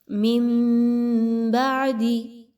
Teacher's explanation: ثم تولیتم من بعد، نون ساکن کے بعد با کا حرف آ گیا، یہاں پر اقلاب کا قاعدہ فالو کریں گے، آپ نے آواز کو ناک میں لے کر جانا ہے اور نون کی آواز کو میم میں بدل دینا ہے